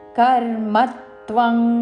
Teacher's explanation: కర్మ మాలోని మా మీద ఆఘాత పలుకుతూ